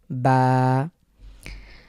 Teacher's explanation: হবে না এটা খুব স্বাভাবিক সহজ এরপরে হলো বা বার উচ্চারণ এটি আমাদের ঠোট থেকে উচ্চারিত হয় ঠোট থেকে উচ্চারিত